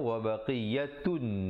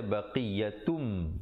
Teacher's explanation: Asalnya wa baqiyatun, tetapi dibaca baqiyatum dengan 2 harakat. Mim idgham wajibul gunnah, di situ 2 harakat. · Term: idgham bi gunnah